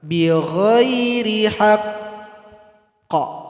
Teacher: Cara berhentinya sukunkan, kemudian tahan 2 detik baru dipantulkan.